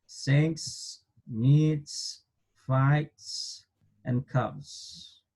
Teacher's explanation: son sonidos que se llaman voiceless, ¿sí? Quiere decir que interviene el aire más que las cuerdas vocales.